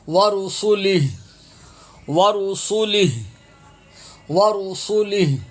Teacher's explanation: جہاں پر یہ نشان آ جائے وہاں وقف لازمی ہوتا ہے، لازمی کرنا ہوتا ہے. تو یہ وقف کی صورت میں ہا ساکن ہو جائے گا